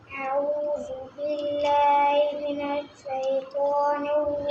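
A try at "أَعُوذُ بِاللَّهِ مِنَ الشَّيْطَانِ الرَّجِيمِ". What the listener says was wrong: شین کو صحیح ادا کریں من الشیطان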